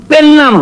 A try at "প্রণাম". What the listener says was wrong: এর নাম নয়, কথাটা প্রণাম। একটা রফলা লাগবে।